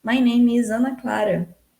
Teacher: Você vai começar baixo e vai subir. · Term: rising intonation